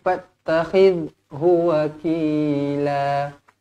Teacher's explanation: Huruf zal dekat sini jangan baca melantun. Zal jangan baca melantun, lembut je.